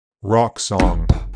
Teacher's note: In General American, this sound is not rounded. It merges with unrounded open vowel sound, ah.